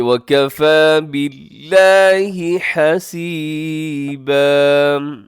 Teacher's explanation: لفظ اللہ کو آپ پڑھیے گا باریک کیونکہ اللہ کے نیم سے پہلے آگے ہے با کے نیچے کسرہ زیر، جس کی وجہ سے ہم اسے باریک پڑھیں گے.